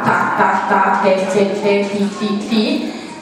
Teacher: la punta della lingua va a toccare l'alveoli dietro gli incisivi superiori